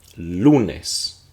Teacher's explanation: So you have to listen for that stress. Lunes. We're emphasizing lu.